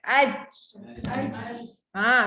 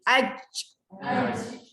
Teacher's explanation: lidah tengah-tengah naik ke atas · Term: huruf jim